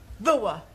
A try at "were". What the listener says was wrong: Yeah, try saying voa without the the. Try again, but this time, don't say ower, just were.